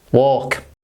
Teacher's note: There is no L in this word. So don't pronounce it. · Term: silent L